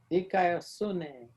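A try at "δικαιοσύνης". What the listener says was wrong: Put an S on the end. Dikaios Sunis.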